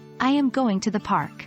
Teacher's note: With falling intonation, your voice falls at the end of the sentence. This typically occurs at the end of statements or when giving a command.